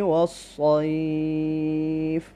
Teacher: صاد کو موٹا پڑھیں گے اس لیے کہ حروف مستعلیہ میں سے ہے